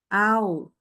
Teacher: kalau membaca wa itu tidak disertai dengan hembusan udara